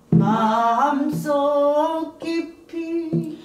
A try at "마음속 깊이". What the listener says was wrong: 너무 올라가서 마음속 깊이 시작